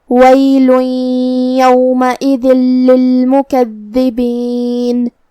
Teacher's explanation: کلمت للمکذبین میں یہاں حرف دال کی تشدید کا دھیان رہے، 2 حرف کے برابر ہمیں دال کو پڑھنا ہے